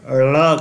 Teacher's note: इसके उच्चारण में थोड़ा ल और अधिक ड मिला रहता है, यह हमें ध्यान में रखना है।